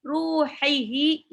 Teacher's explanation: Yang pertama haknya tipis tenggorokan tengah, yang kedua haknya tebal tenggorokan bawah